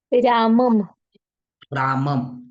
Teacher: अनुस्वारा अगोदर आपल्याला अ उच्चारण कराव लागत त्याचा शिवाय अनुस्वारा उच्चारण हो शकत नहीं कितीही अ उच्चारण न